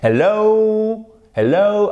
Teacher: Vous accentuez la deuxième partie et vous avez une diphtongue comme ceci.